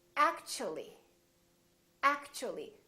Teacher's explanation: the T becomes kind of a CH sound